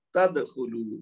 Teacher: दाल का कलकला होगा लेकिन सुगरा यानी हल्का होगा क्योंकि लफ्ज के बीच में है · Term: कलकला सुगरा